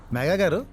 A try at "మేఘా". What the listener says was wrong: మేఘా కాదు, మేఘా ఒత్తు ఘా పిలు.